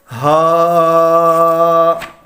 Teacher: حلق کے نیچے والے حصے سے ادا ہوگا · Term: دو چشمی ہا